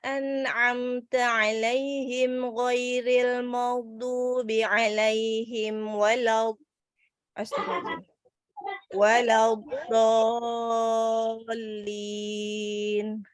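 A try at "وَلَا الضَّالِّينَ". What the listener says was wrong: Tapi al-maghdubi mimnya tadi masih tebal. Terus waktu waladdo, huruf dot saya lihat kayak pipinya kayak gelembung. Jangan gelembung pipinya. Bo, nggak boleh gelembung pipinya.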